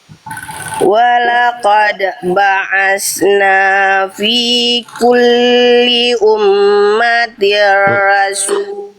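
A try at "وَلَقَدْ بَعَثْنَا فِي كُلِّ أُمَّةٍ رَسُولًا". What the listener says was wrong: Kalau berhenti di rasul, jadi nggak dibaca rasul, tapi rasulah ya, berhenti pada huruf yang berharokat fathatain ya, maka dibaca tidak jadi sukun, tapi dibaca jadi harokatnya vokal, jadi panjang 2 harokat ya, vokal A-nya namanya mad iwad, rasulah gitu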